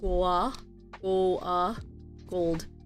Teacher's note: hear the O kind of Blended together gold it's because the the dark L is the influence to the vowel